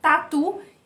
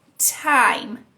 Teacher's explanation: O T e o D são muito parecidos com o português, só que eles têm um leve soprinho